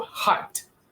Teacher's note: you write D, but it has a T sound. We're going to learn that later in other live meetings.